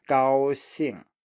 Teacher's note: keep high for the first tone, for the first syllable, and then you drop down. So 高 兴, straight combination here.